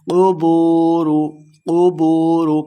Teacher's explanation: قبور، قبور، قاف کو موٹا پڑھیں گے، بو واو مدہ ہے، اس کو 2 حرکات لمبا کر کے پڑھنا ہے